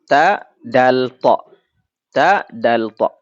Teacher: ta, dal, ta juga makhrajnya sama, ujung lidah ketemu dengan pangkal gigi seri atas. Berarti sangat dekat makhrajnya.